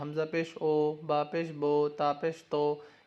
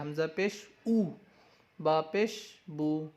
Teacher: اس کو کھینچ کے نہیں پڑھنا ہے آپ کو، اور آواز مجہول نہیں ہونا چاہیے، معروف پڑھنا ہے